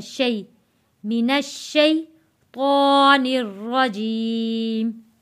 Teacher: शै को खींचेंगे नहीं, हरूफे लीन है